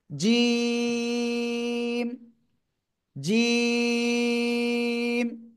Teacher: জিহ্বার মধ্যখান তার বরাবর উপরে তালুর সাথে লাগিয়ে এটা 3 আলিফ টানিয়া উচ্চারণ করতে হবে